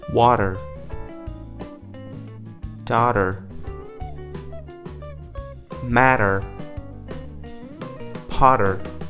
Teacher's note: Now, technically speaking, the flap T is converting the T into a D, okay? But practically, it's an alveolar tap. · When the T appeared in between two vowels, then the T was acting like a flap T, or you can simply put, it was acting like a D.